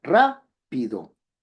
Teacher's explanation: Ra es una sílaba tónica respecto de pido